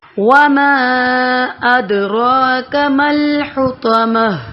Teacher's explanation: اد ما کھڑا زبر اور الف مدہ اور اد دال پر کلکلا کریں گے. را موٹا پڑا جائے گا.